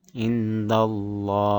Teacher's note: Cara bacanya lafaz Allah itu dibaca tebal, panjangnya sekitar 2 harokat. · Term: tafhim